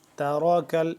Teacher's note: تاراکل را کو موٹا کر کے پڑھیں گے جبکہ آگے کاف ہے اس کو باریک